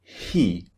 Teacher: you simply make a a narrow Gap at the back of your your throat to push the air through